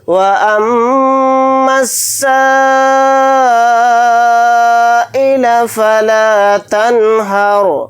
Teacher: رائے ساکنہ کو موٹا یعنی پر منہ بھر کے پڑھیں گے، حالت وقف میں را ساکن ہو کر ہی پڑھا جائے گا۔